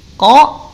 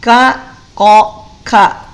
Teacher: Qaf tidak punya sifat hams.